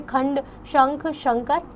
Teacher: इस ध्वनि का उच्चारण करते समय वायु केवल नाक से निकलती है। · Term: अनुस्वार